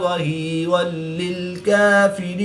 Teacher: 2 زبر کی تنوین کے بعد لام حروف یرملون میں سے ہے تو یہاں پر بھی ادغام بلا غنہ ہوگا، یہاں پر بھی غنہ نہیں کریں گے۔